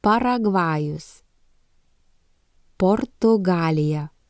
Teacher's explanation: this is a voiceless sound and both lips close completely